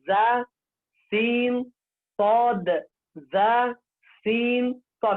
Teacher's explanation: تو تینوں حالتوں میں زبان کی نوک ثناء سفلا کے کنارے کے ساتھ ملنا چاہیے، تو لہذا آپ اس کی طرف فوکس کر دیجیے.